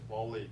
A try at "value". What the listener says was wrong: Yeah, I'm hearing this. I'm hearing Wally. Okay, value. V is weird for everybody. If those of y'all speak Spanish, y'all would probably say value, right? Some of y'all do. And folks in India, Pakistan, a lot of languages say value.